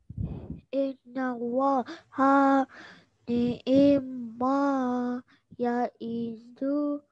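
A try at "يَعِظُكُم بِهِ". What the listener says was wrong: Zu tak panjang. Ya'izukum bih.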